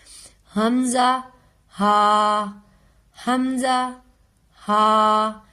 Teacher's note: ये सीने की तरफ से अदा होंगे और बगैर किसी हिचकिचाहट के अदा होंगे।